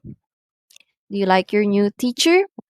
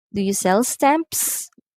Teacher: the words at the end of the sentence are going up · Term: rising intonation